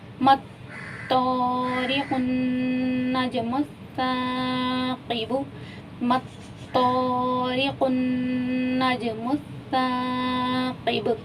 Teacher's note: با پہ کلکلا ہوگا کیونکہ وقت کی صورت میں پیش جو ہے وہ حذف ہو جائے گا، یعنی کہ ختم ہو جائے گا، اور با ساکن ہو جائے گا.